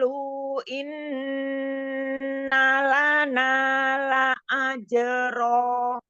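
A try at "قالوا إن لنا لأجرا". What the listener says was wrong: Majaisnya belum 4, masih 2 lagi. Qalu, lu-nya panjang. Nah, ini 4 ya. Qalu, lu-nya 4.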